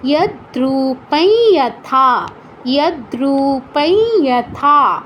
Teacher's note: অনুস্বারের জায়গায় ই চন্দ্রবিন্দুর মতো উচ্চারণটা করতে হবে